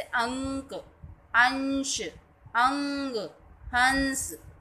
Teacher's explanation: इसका उच्चारण करते समय नाक से वायु निकलती है और मुख से कम। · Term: अनुस्वार